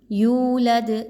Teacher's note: دال پہ قلقلہ کرتے ہوئے وقف کریں گے